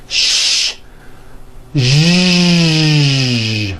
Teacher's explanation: first make a sh sound and then you add voicing like that now for some people this may take a little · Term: voiced sh sound